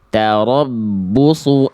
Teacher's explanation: suunya satu harakat karena domahnya tidak berjumpa dengan wau sukun ya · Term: satu harokat